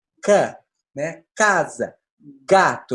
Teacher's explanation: é quando o dorso da língua encosta lá atrás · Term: velar